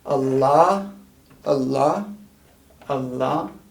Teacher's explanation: got a glottal stop with an a then an l and then a long a